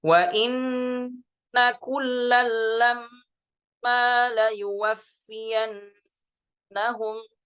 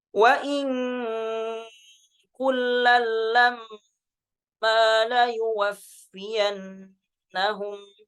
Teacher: kalau di riwayat Syu'bah wa in diikhfakan ke huruf kafnya